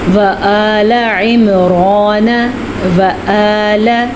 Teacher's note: حمزہ کو نرمی سے پڑھا اور عین کو سختی سے پڑھا